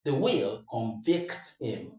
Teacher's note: As the verb, the stress falls on the second syllable.